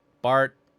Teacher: You can't quite hear a T sound, but I don't think a T sound was actually pronounced. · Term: glottal stop